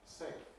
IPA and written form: seɪf (safe)